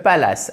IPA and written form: ˈpæl.ɪs (palace)